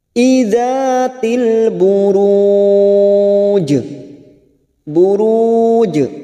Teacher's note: ada mat yang bertemu dengan huruf hidup dan dibaca waqaf, karena kita waqaf setiap ayat ya, maka kita panjangkan 4 harokat mat arid li sukun. Ujungnya jangan lupa dipantulkan, karena ada huruf yang termasuk huruf qalqalah, yaitu huruf jim yang mati di akhir kalimat dan dibaca waqaf, namanya qalqalah kubra.